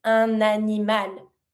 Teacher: Starting with the vowel, I connect my N with my word animal, un animal.